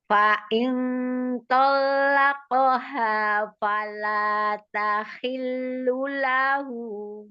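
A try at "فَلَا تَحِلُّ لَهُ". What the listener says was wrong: Fala tahillu lahu. Falanya mad umi panjang.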